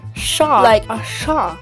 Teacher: a retroflex S sound, which is pronounced at the top of the mouth rather at the teeth